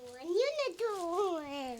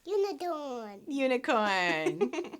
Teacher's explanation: even though it starts with a U, which is a vowel, the sound it makes is a consonant sound -- YY, which is like a Y sound.